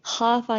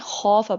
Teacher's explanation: خو جو ہے وہ پور لیٹر ہے، خافا نہیں پڑھیں گے، خوف پڑھیں گے، کیونکہ پور لیٹر کے ساتھ وہ الف بھی موٹا ہو جاتا ہے. وَلِمَنْ خَافَ مَقَامَ مقام، یہ جو قاف ہے یہ بھی پر پڑا جائے گا اور یہ الف بھی پر ہو جائے گا.